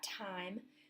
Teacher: time with that aspiration, that puff of air right at the beginning of the word